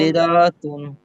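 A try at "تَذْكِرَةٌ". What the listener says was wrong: এই যে কি র টান দিচ্ছেন কেন? আচ্ছা দেখেন, তাহলে এই যে এই গোলটা ওয়াকফ করলে কি হয়ে যাবে? তাহলে গোলটা ওয়াকফ করলে হা হয়ে যাবে, ঠিক আছে? তাহলে এই যে র গে হা কে ধরবে, র হা জবর রহ। তাজকিরাহ, তাজকিরাহ।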